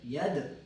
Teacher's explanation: دال کے اوپر وقف جھٹکا دیں